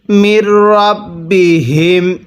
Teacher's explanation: মির রাব্বিহিম, মিম লাগবে, এই রয়ের সাথে নুন সাকিনটা বাদ যাবে।